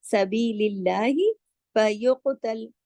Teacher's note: बारीक पढ़ेंगे अल्लाह के नाम को, क्योंकि जेर है उससे पहले